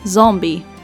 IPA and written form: ˈzɔm.bi (Zombie)